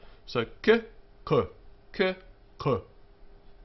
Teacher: It's pronounced somewhat like k, but further back in the throat.